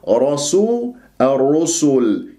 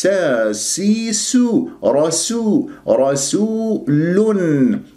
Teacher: راسو، البعض يقول راسو الرسل، يجعل السين صادا، فننتبه لهذا الموضوع أحبتي في الله. راء مفخم، راء مفتوح، والسين مرققة.